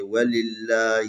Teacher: یہاں لفظ اللہ ہے، اس سے پہلے لام کے نیچے زیر ہے، اس کو ترقیق پڑھیں گے